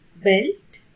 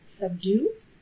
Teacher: When the sound bilabial b is articulated, the vocal box vibrates. That is, the vocal cords vibrate. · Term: bilabial voiced b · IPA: /b/